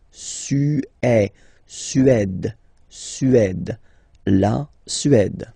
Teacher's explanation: Remember, accent grave, it's really open.